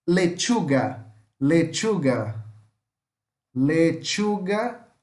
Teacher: é como se você pusesse um T aqui na frente e falasse com o som de X